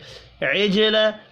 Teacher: عجل، جیم ساکن پر قلقلہ کریں گے